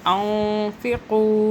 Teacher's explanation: نون ساکن ہے، چھپائیں گے 2-3 سیکنڈ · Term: اخفا